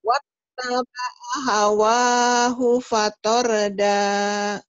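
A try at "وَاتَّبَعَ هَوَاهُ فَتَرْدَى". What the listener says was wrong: Nah, karena Mbak Novi ini orang Inggris ya, jadi ta-nya, tar-nya nyambernya kayak tor-tor gitu, ar-ar gitu oh, sih ya. terang A-nya. Ya, fatar, ya.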